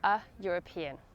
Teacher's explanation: ‘European’ is pronounced with a /y/ sound, so use A